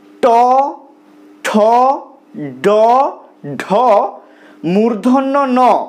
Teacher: এই ধ্বনিগুলো উচ্চারণের সময় আমাদের জীভের যে ডগা বা জীভের অগ্রভাগ সেটা মূর্ধাকে স্পর্শ করছে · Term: মূর্ধন্য ধ্বনি